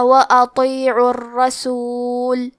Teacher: تشدید زبر کا ہے تو ہمیں حرف الراء کو موٹی آواز میں بھی پڑھنا ہے۔ کلمت فَإِن کے آخری میں نون ساکن ہے، پھر حرف التا ہے کلمت تولیتم، تا حروف الاخفاء میں سے ہے۔